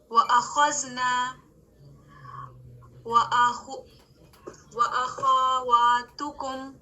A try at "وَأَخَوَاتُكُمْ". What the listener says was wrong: خواہ کو لمبا نہیں کرنا, اخواتکم.